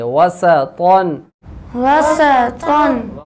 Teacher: کو موٹا کریں گے طا دو زبر طن وسطن وسطن وسط سین کو باریک کریں گے طا کو موٹا کریں گے